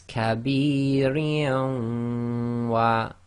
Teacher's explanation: So we have Kasratain followed by one of the Yarmalun letters. So we're going to do an assimilation, read the Waw as if it's got a shadda. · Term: Idghaam